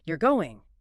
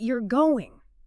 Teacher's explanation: Intonation, for instance, can completely change the meaning or intent of a sentence even with the exact same words like you're going with a rising tone is clearly a question, but you're going with a falling tone states a fact or maybe an observation.